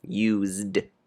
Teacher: be careful that s in use sounds like z